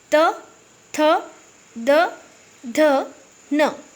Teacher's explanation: इन वर्णों का उच्चारण मतलब करते समय हमारी जीवा हमारे दांतों के भाग को स्पर्श कर रही है। ठीक है, दांत के पिछले भाग को। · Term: दंतव्य व्यंजन